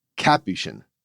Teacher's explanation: the religious order is pronounced with the emphasis on the first syllable